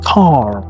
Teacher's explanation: The letter R of course the letter R the consonant R in American English the letter R is pronounced clearly at the end of the words